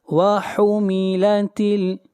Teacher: مخرج ہے وسط حلق، یعنی حلق کا درمیانی حصہ، ہا کو وہیں سے پڑھنا ہے۔